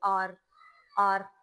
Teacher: R is definitely touching the roof and it's vibrating as well.